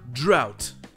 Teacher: avec le son ow, avec toujours le GH muet et enfin le T